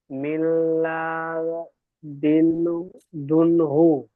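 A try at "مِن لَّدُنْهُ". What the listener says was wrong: লা টান হয়ে যাচ্ছে, লাতে টান হবে না। মিল্লাদুনহু।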